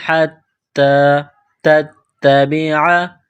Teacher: نصارا حتی، تا کو دبانا ہے، سختی کرنی ہے. حتی تتبع، تا کو تا کے ساتھ پلس کرنا ہے، تا کو دبانا ہے.